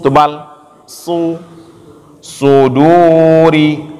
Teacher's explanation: Dia cara bacanya sama dengan sin, tetapi bedanya dia huruf tebal. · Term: sod tebal